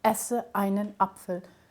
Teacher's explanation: every word in German that begins with a vowel has this glottal stop out the front of it